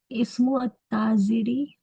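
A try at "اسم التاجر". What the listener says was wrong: हाँ, अब मिला इस्मु अत्ताजिरी नहीं, इसको मीम को सीधा ता में मिलाइए, देखिए हरूफ शमसी है। इस्मु ताजिरी।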